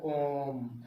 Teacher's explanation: तीन गुना समय लगता है यानी दीर्घ से ज्यादा समय